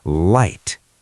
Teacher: In American English, it's a dark L sometimes, but here it's at the start. It needs to be clear, tongue behind the teeth